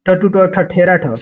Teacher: तालु के मूर्धा भाग से, यानी कि इसमें पूरा ट वर्ग है, ट वर्ग